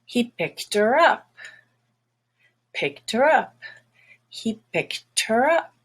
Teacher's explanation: how to sound more American or more natural by dropping the H · And notice that he at the beginning has to have that H.